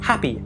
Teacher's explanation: the glottal fricative [h] [h], as in happy